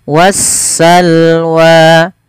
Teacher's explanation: Berkebalikan daripada alif lam qamariyah yang dimana lamnya terbaca dengan jelas, sedangkan di lam alif lam syamsiyah yaitu suara sinnya, suara alif lamnya diidghamkan ke huruf sin sehingga sinnya berharokat tasydid